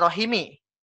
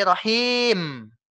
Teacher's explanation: Maka dari itu, mad tabi'inya di sini berubah peran menjadi mad arid lisukun. Dibaca panjang 3 hingga 4 harokat. Atau 1,5 hingga 2 ayunan.